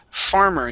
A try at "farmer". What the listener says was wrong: Here you said farmer. Okay, control your tongue on the R sounds.